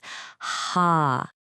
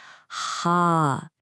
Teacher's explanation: Now, this one is a classic for English speakers because, well, we just don't have the sound. It comes from way back in your throat. The best way to find it is to pretend you're fogging up a pair of glasses.